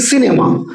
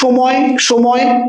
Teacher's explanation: সি উচ্চারণ করার সময় জিভটা ঠিক দাঁতেই লাগছে, ওপরের পাটির দাঁতের পিছনে। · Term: দন্ত স